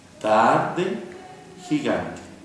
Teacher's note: Tarde tiene la vocal A y luego la E. La sílaba fuerte recae en la A. A, E. Gigante.